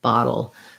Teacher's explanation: the o you want to think about that as being an ah sound the t's are going to be like a d bottle and